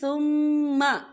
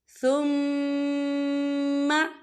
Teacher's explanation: إِلَى كِتَابِ اللَّهِ لِيَحْكُمَ بَيْنَهُمْ ثُمَّ، یہاں دیکھیں ثُمَّ، یہاں میم مشدد ہے، تو یہاں پر غنہ ہوگا۔